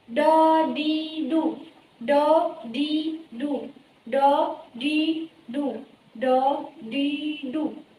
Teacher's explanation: apabila ia diucapkan maka makhrajnya itu terletak pada lidah tengah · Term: huruf dot